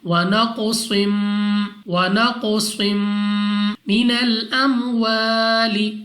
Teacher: 2 زیر کی تنوین کے بعد میم، یہاں پہ ہم نے غنہ کر کے پڑھنا ہے